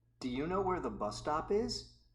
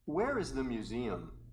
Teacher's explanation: Notice that the indirect question has rising intonation. The information question with where has falling intonation.